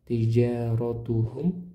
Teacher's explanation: Tijaratuhum rnya tebal tafkhim karena berharakat fathah.